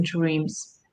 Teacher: the d in dreams is devoiced as well